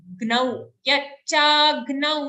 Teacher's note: after cha, we have a gnau sound, half ga joined to a nau.